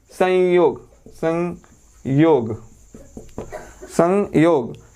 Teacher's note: संयोग बोलते हैं तो नाक से हवा निकलती है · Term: अनुस्वार